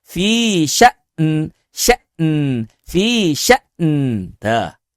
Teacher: Maka terjadi pertemuan dua huruf sukun tuh wal ard tidak boleh salah satunya dihilangkan.